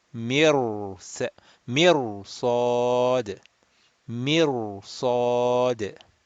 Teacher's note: this ra sakin, even though the letter before has a kasra, will be mufakham, rounded.